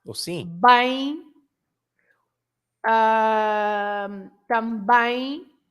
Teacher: Because there is a nasal sound when the M has a vowel before it at the end, right? At the end of the word.